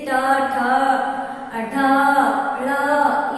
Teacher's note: जब हम बोलते हैं तो हमारी जीवा हल्की सी मुड़ी हुई होती है, जिसे मूर्धन्य कहते हैं, उसे ही मूर्धन्य भी कहते हैं।